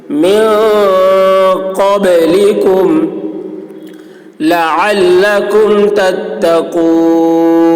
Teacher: والذین من قبلکم، نون میں اخفا، قاف کی آواز موٹی ہوگی، با میں قلقلہ، یعنی با کی آواز ڈبل نکلے گی